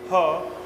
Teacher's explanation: जब ह का उच्चारण करते हैं हम लोग ह, तो यहाँ पर क्या होता है कि कंपन उत्पन्न होता है। इसलिए इस ह को हम लोग द्वितीय प्रकंपित व्यंजन के नाम से जानते हैं।